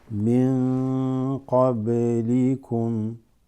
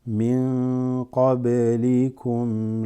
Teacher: Slight qalqala on the ba.